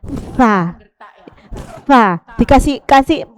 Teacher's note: Kalau fa itu jenengan kasih hembusan. Fa.